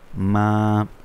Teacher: সুতরাং আমরা মিমের ওপর খারা জবর হয়েছে, সেই জন্য আমরা মিমকে এক আলিফ পরিমাণ টেনে পড়ব